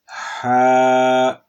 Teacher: اس کو باریک ادا کرنا ہوتا ہے۔ اس کی ادائیگی کے وقت منہ کھلتا ہے، کشادہ ہوتا ہے اور سانس باہر آتی ہے، اس میں آواز شامل ہوتی ہے